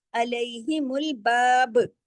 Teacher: علیہم الباب، اگر رکیں گے تو علیہم الباب، با پہ کلکلا کر دیں گے کیونکہ ہم نے یہاں عارضی سکون کیا